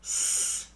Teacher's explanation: There's no buzz in your throat. It's your voice box. You don't use your vocal cords to make a s sound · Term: no voice